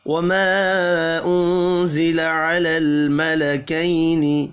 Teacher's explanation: وما انزل على الملكين، وما الف کے اوپر چھوٹی مد ہے، تین الف کے برابر کھینچ کر پڑھنا ہے، نون ساکن کے بعد زا ہے، اخفاء حقیقی ہوگا